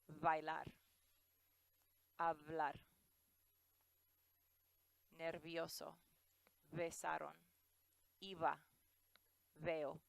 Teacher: you can hear the B and the V sound exactly the same